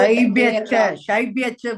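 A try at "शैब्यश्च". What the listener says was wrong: Shaibhyascha. So here that Shakara should be heard properly. What is the split there? Shaibhyascha. Shaibhyah Shaibhyah plus cha. But that visarga will get converted to what? Shaibhyah will become Shaibhyas plus cha. The visarga will be replaced with a half sa. That is halant sa. Shaibhyas plus cha. It becomes Shaibhyascha.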